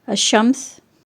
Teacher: بعض حروف میں لام لکھا تو جاتا ہے لیکن آواز ظاہر نہیں کی جاتی، بلکہ لفظ کا پہلا حرف مشدد یعنی تشدید والا ہوتا ہے۔